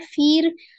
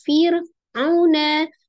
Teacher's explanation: Fir ada ro sukun sebelumnya kasro, ro-nya dibaca tipis